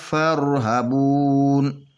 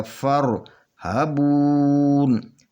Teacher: وَإِيَّايَ، وَإِيَّايَ فَارْهَبُونَ، یہ فا کے آگے را ہے تو یہ بیچ میں الف ہے، یہ الف نہیں پڑھا جائے گا، فا کو را کے ساتھ ملا کر پڑھیں گے، اور را جو ہے یہ پر پڑھا جائے گا، فر، کیونکہ یہ را سے پہلے زبر ہے تو اس کو پر پڑھا جائے گا، را موٹا پڑھا جائے گا۔